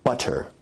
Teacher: in received pronunciation where you say butter, that involves a full t stop